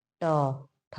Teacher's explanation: जब आप बोलिएगा, उच्चरित करिएगा इनको, तो देखिए ट, ठ, जिह्वा का अग्रभाग हमारे मूर्धा को टच कर रहा है और तब आवाज निकल करके बाहर आ रही है। टंकार, टंकार आ रही है। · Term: मूर्धन्य